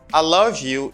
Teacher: When you're speaking fast, you don't pronounce I completely. You pronounce it as ah.